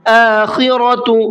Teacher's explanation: خا کو حلق سے نکالنا ہے اور منہ بھر کے پڑھنا ہے، اور ساتھ میں را کو بھی منہ بھر کے پڑھنا ہے۔